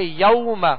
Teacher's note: واو لین ہے، اس کو نرمی کے ساتھ معروف طریقے سے ادا کریں گے